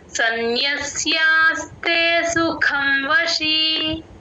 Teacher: ఆ ఖ మహాప్రాణం ఉంది గమనించండి